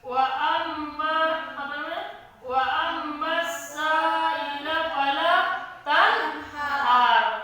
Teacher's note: Ada di situ nun mati bertemu ha. Hukumnya izhar. Bacaannya jelas, bunyinya nyata.